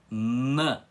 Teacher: com a língua articulada para cima e encostando nos dentes